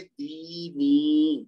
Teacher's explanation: دونوں کو 2 حرکت تک لمبا کریں گے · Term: یا مد